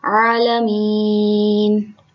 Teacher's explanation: عین کو ذرا زور لگا کے حلق سے نکالتے ہیں، عالمین۔ اچھا، یہاں پہ مین میں نے کھینچ کر اس لیے وقف کیا کہ یہاں پہ ایک قاعدہ ہو رہا ہے جس کو کہتے ہیں یا مدہ۔